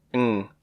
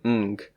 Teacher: it is pronounced /ŋ/ always, rather than /ŋg/, like it may be in English